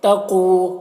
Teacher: قاف کو موٹا کر کے پڑھیں گے اور کھینچیں گے،